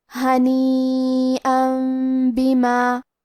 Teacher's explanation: کلمت بما، با حروف القلب میں سے ہے اور قلب کا معنی ہے بدل دینا، تو ہم یہ تنوین کو میم میں بدل کے لیکن غنہ کے ساتھ یہ حکم کو ادا کریں گے